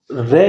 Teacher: ठीक है, ध्यान दीजिएगा। लुंठित व्यंजन मतलब जीभ जो है मुख के मध्य में आ जाती है और बार बार झटके से आगे पीछे गिरती है, तो रे लुंठित है आपका।